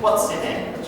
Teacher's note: So, the pronunciation of what and name, it's fully, okay? But we reduce the pronunciation of is and your.